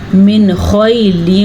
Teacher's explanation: نون ساکن کے بعد خا آ گیا ہے تو یہاں پہ اظہار کا قاعدہ ہوگا